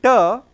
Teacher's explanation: tip of the tongue is touching the teeth ridge. So, this is alveolar, active articulator is tip of the tongue